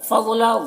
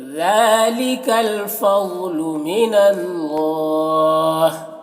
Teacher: آگے ذالک ذال کو باریک پڑھنا ہے، کھڑا زبر ہے جو الف مدہ کی طرح ہے۔ فضل ضاد کو یہاں پر پر پڑھنا ہے کیونکہ یہ حروف مستعلیہ میں سے ہے۔ من اللہ کو پر پڑھنا ہے اور یہاں پر کھڑا زبر ہے جو الف مدہ کی طرح ہے، اور یہاں پر تا وقف مطلق کی علامت ہے، وقف کریں گے تو ہا کا زیر سکون سے بدل جائے گا، تو پھر یہاں پر بھی مد عارض وقفی ہوگا۔